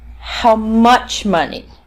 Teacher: the prominence, the stress, sentence stress, shifts to much, because the information money is now old information. So we don't want to re-stress that again.